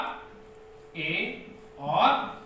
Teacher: अब मुंह हमारा संकुचित होगा, मतलब कि लगभग आधा खुलेगा। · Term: अर्ध संवृत